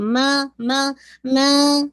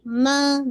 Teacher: ماں کے اندر nasal sound نہیں ہے، ماں ایسے نہیں، ماں نارمل، اور نہیں ماں اس کو ہیوی نہیں کرنا.